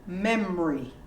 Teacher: You don't really hear the O.